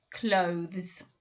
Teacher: is that to the zed sound remember it's a zed sound although it's written with an s it actually ends with a z sound